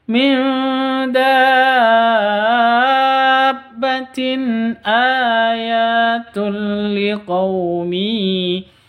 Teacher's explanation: Tanwin bertemu dengan hamzah. Cara bacanya jelas, tanwinnya jelas, hamzahnya juga jelas